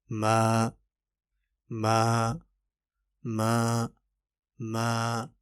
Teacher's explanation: اس ما میں ناک سے آواز نہیں آنی چاہیے